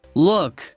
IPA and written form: lʊk (look)